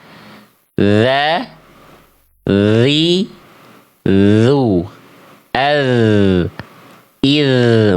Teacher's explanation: ujung lidahnya teman-teman sentuhkan ke ujung gigi sari atas, nempelnya tipis-tipis. Ketika disentuhkan, suaranya harus ngalir. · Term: huruf dzal